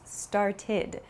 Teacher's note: has a few different pronunciations so for example start becomes started it has an ID sound it's not an ed sound but an ID sound